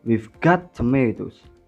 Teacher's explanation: It has already been mentioned, so the information it conveys is given by Adi and Budi. The tonic is therefore shifted away from the last lexical item, tomatoes, into the word got. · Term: given information